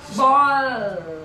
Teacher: The tongue has become long and narrow, and the breath stream is passing by the sides. That is why it is called a lateral.